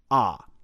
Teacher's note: Phoneticians, or linguists who study speech sounds, classify Ah as an open vowel because it's produced with a fully open mouth without obstruction by the tongue or the lips